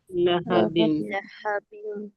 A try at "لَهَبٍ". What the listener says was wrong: بڑی ہا کا ساؤنڈ آ رہا ہے